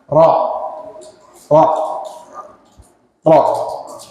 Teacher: kemudian dia ada sifat tikrar ya Apa itu tikrar getaran tapi getarnya jangan kebanyakan ya Pak diminimalisir getarannya ro ro ro · getarnya jangan kebanyakan ya Pak diminimalisir getarannya ro ro ro kemudian saat mengucapkan huruf ro ini lidah bagian belakang diangkat inilah yang akan menjadikan suara kita kayak berbunyi o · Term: makhraj ro